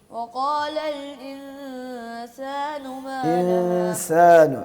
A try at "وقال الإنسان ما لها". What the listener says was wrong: سین درست کرنا ہے بیٹا.